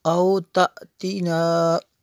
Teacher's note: اس پہ یہ جو مد ہے یہ مد منفصل ہے کیونکہ حمزہ دوسرے کلمے میں ہے ۔ او تأتینا، حمزہ کھڑا زبر آ، یا زبر یا، تا